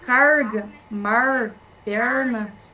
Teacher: Aí temos o retroflexo, que é aquele R mais interior que eu falo, né?